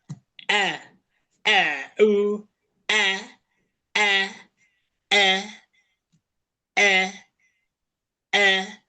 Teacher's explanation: Menyulitkan Anda pindah ke huruf setelahnya atau lidahnya tidak tidak nempel tidak sejajar dengan gigi di bagian bawah. Lidahnya tidak menempel. E e u e e e maka suaranya berubah menjadi imalah. Imalah itu bisa bisa menempel lidahnya, bisa tidak nempel tergantung memang kondisinya.